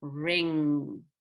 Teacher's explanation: And the NG is in the same column as K and G. So it's made with the back of the tongue, just like a G. But this time, of course, you press your top of your mouth down to make your nose bigger.